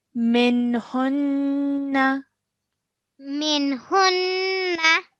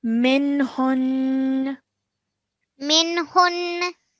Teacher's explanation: we have to stop our sound of noon at the end and not pronounce the fatha. Okay. So we would say it as minhun.